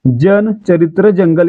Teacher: जन, चरित्र, जंगल यांचा उच्चार य जोडल्यासारखा होतोय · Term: तालव्य वर्ण